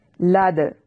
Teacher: اسے ایک حرکت کے برابر لمبا کرنا ہے. لد، دال پہ قلقلہ یعنی اس کو ہلا کر پڑھنا ہے